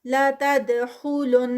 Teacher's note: لا تد پہ دال کا کلکلہ ہوگا، پھر خا ہیوی، اور لن یہاں پر غنہ